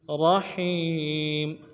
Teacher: را کو موٹا ادا کرنا ہے، ہا کو یا کے ساتھ ملانا ہے